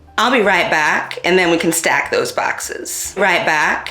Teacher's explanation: bat retraction, or the ʻA vowel being pronounced further back in the mouth